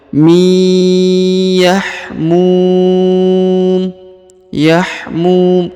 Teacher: Ya, di sini ada nun sukun ya. Bertemu dengan huruf ya bertasdid, maka huruf nunnya ini melebur dan menghilang, ditahan dan ditekan dua harokat ya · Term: huruf nun sukun